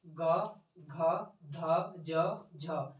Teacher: देखिए सिंपल सा है, इसमें जिसको उच्चारण करने में प्रकंपन हो रहा है, झनकार हो रहा है, वो घोष घोष है, और झनकार नहीं हो रहा है तो अघोष है। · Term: घोष वर्ण